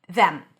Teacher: When it's stressed, it's pronounced with a voiced th, the, tongue out, then e, as in red, and an m.